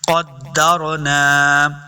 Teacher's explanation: را ساکن ہے، اس کو موٹا پڑھیں گے، پر پڑھنا ہے